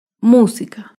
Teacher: acentúan en la antepenúltima sílaba por ejemplo la palabra música música se acentúa en la antepenúltima sílaba música todas las palabras esdrújulas llevan tilde otro ejemplo de una